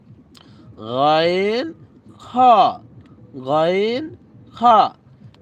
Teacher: এরপরে 3 নম্বর মাখরাজ হলকের শেষ ভাগ হইতে